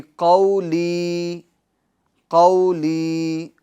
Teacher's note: قاف یہ حروف مستعلیہ میں سے، لہٰذا ہم اس کو کیا کریں گے؟ پور یعنی موٹا پڑھیں گے، اور قو اس میں واو لین ہوگا، ٹھیک ہے؟